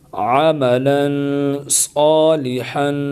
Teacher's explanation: عین زبر ع، میم زبر ما، عم، لام 2 زبر لن، عملن۔ یہاں غنّہ کریں گے کیونکہ تنوین کے بعد حروف اخوا میں سے صاد آ گیا ہے، یعنی حروف حلقی میں سے نہیں ہے، تو غنّہ کریں گے۔